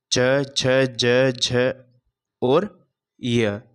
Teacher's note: तालु से च वर्ग का वर्ग का उच्चारण किया जाता है।